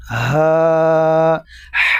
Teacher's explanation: چھوٹی ہا ہے، یہ سینے سے آواز نکلتا ہے